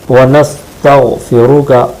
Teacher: غین ہے یہاں پر، جو عام طور سے گاف ادا ہو جاتا ہے، اس کو دھیان سے ادا کرنا ہے۔